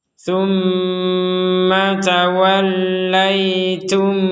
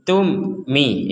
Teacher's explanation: mim sukun bertemu mim maka kita masukkan mim yang pertama kepada mim yang kedua kalau sudah dimasukkan maka kita tidak boleh membacanya dengan terpisah ataupun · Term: menyatunya huruf pertama